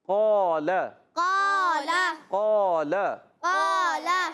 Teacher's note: ہونٹ گول نہیں کریں گے، قول ایسے نہیں، قال